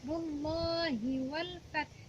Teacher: Nah, rullah ada lafaz Allah, huruf sebelumnya berharokat dhammah, itu dinamakan lafaz zalalah tafkhim. Lafaz Allah yang dibaca tebal. Rumlah, rumlah dibaca tebal.